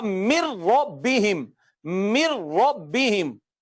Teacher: من ربہم کو جب ادغام کر کے پڑھیں گے تو ہو جائے گا مر ربہم، مر ربہم. یوں نہیں ہوگا من ربہم، نو، مر ربہم، مر ربہم. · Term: ادغام بلا غنہ